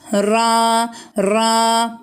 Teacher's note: ra harfi hükmü ra harekesi Üstün kalın bir şekilde okuyoruz